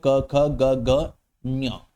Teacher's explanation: ठीक है, अच्छा जी, एक बात मैं और बताता चलूं, ये जो क वर्ग होता है ना, क वर्ग पूरा का पूरा ये कंठ से बोला जाता है